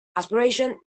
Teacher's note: Aspiration is a word which doesn't have aspiration because the voiceless plosive in aspiration is not at the beginning of a stressed syllable.